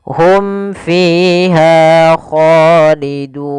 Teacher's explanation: Awalnya duna 2 harokat karena dia sukun atau kita berhenti, nunnya dimatikan, tapi sebelum itu harus kita panjangkan dulu dunya. Dun boleh 2 harokat, boleh 4 harokat, dan boleh pula 6 harokat. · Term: mad arid disukun